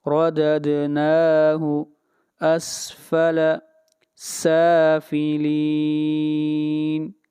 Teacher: سین کو لمبا کریں گے، سین کے اوپر کھڑی زبر ہے اور اس مد کو مد اصلی کہتے ہیں۔